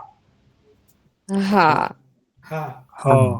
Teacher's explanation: হা বলার সময় গলা থেকে বাতাসকে বের করছেন, প্লিজ বাতাস বের করবেন না, একেবারে বাতাসবিহীন হা।